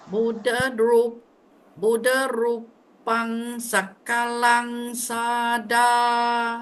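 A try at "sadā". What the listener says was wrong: Sada. Because the first A is short. The second A is the one you drag. So it's sada. Sada, not sada. One D only.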